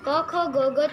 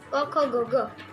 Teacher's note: वो उसको कंठव्य कहते हैं, क्योंकि उसको उच्चारण करते समय हमारे कंठ से उसका उच्चारण होता है